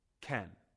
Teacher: The word can is usually not stressed when it comes before a base form. It sounds short and weak.